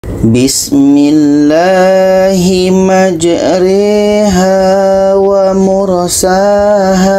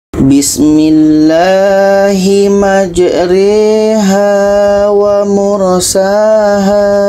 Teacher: Yang asalnya majroha dibaca menjadi majriha. Ini namanya bacaan imalah.